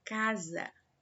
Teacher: a sílaba cá foi pronunciada mais fortemente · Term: sílaba tônica